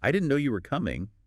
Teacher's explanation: try it with a little lift, a little emphasis on no and coming.